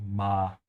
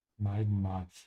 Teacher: the A in German is always open, ma, even if there's an I after it